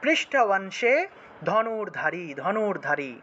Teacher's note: অনুসার শব্দের মাঝখানে থাকায় নয়ের মতো উচ্চারণ হবে